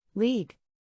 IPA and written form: liːɡ (League)